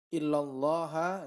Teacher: ini lafzul jalalah, lamnya lam tafkhim